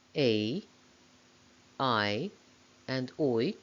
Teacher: A, I, and oi, all glide towards a closer vowel, I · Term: closing diphthongs